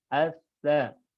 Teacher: Kalau sa itu ujung lidah dengan gigi seri atas. As-sa. Kalau sin dia ujung lidah juga tapi dia tidak nempel di ujung gigi seri atas.